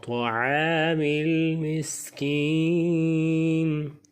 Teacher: طا کو موٹا کریں، زبان کے اوپر تو کی جڑ کے ساتھ